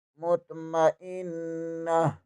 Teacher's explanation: وقت کی صورت میں تا ختم ہو جائے گا، ہا ہو جائے گا، مطمئنہ۔ یا کے اوپر کھڑی زبر ہے، اوپر چھوٹی مد بھی ہے، اسے 2.5-3 الف کے برابر کھینچ کر پڑھیں گے۔